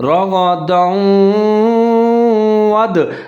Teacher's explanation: رغدا، دال کے اوپر دو زبر ہے، آگے واو مشدد ہے حروف یرملون کا تو دال اور واو دونوں ملا کے پڑھیں گے، جہاں پر ادغام کریں گے غنے کے ساتھ